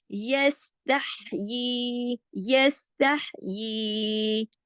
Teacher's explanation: खड़ी ज़ेर या मद्दा के कायम मुकाम है, यानी दो हरकत खींच के पढ़ी जाती है जमाओं के साथ।